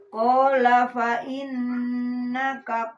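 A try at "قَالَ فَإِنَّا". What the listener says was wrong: Nana panjang. Fa inna. Fa inna. Panjangin.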